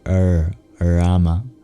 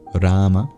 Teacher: pronounced by curling the tongue back in retroflex you can either just make a vowel sound there orama or